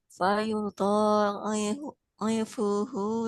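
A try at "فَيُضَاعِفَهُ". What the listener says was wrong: Ifahu, bukan ifuhu.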